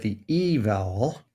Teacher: we can see that the e vowel is high and front